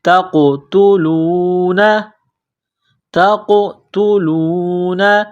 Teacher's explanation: تا کو قاف کے ساتھ ملائیں گے، قاف کو موٹا کرنا ہے، قاف کے اوپر قلقلہ کریں گے